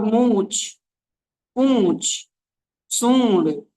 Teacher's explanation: मूछ पूछ सूंड नाक से आवाज निकलनी चाहिए। लेकिन मुंह से ज्यादा आवाज निकालना चाहिए। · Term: अनुनासिक